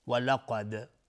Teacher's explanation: قاف از حروف استعلاء غلیظ تلفظ میشه، دال قلقله میخواد چون ساکنه.